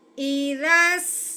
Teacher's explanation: رال نرم سین سیٹی والا